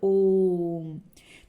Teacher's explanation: उसके बाद आपके आते हैं प्लुत स्वर। ह्रस्व से 3 गुना समय लगता है इसमें। जो पहले वाला था ना, एक मात्रिक वाले स्वर जो थे, उनसे 3 गुना समय लगता है।